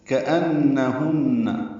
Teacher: كأنهن کاف باریک ہے، حمزہ کو اقصی حلق سے ادا کرتے ہوئے اس کی صفت جہر کی ہے، بلند آواز سے نون سے ملانا ہے.